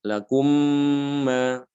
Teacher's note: Maka dia diidghamkan mimnya itu ke dalam mim yang berikutnya.